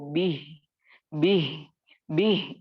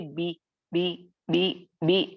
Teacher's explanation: जैसे यहाँ पर मैं आपको बताती हूँ, बिही को आप जब रोकेंगे तो उसको बिह बिह बिह यानी ये अंदर से निकलने वाला हा है, अक्सल हलक से